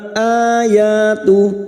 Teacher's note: qamariah Innamal ayatu a Hamzah yang berharakat Alif kecil di atas mad badal cabang dari mad thii dua harakat kita panjangkan